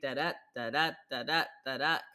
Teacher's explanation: And one thing that's interesting, iambic meter is when you have unstressed, stressed syllables. And so you have the stress placed on the second syllable. And it kind of creates this very steady da-da, da-da, da-da, da-da kind of rhythm.